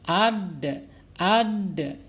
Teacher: Asyidah berarti tertahannya suara kita ketika mengucapkan huruf dal. Ad. Ini yang berlawanannya.